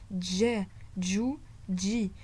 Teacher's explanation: Vous allez sentir un D avant de dire le je. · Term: jim